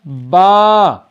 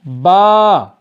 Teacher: با دونوں ہونٹوں کے تر حصے کو آپس میں ملانے سے پڑھا جاتا ہے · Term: حروف شفوی